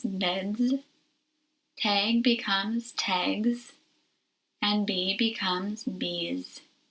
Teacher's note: S is pronounced as Z after voiced sounds like D, G, and E.